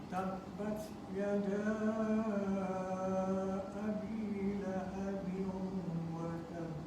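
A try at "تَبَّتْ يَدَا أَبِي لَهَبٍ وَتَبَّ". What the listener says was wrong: Jadi kuat-kuat dan sikit pada bunyi ba tu. Tabbat yada abi lahabin wa tabb.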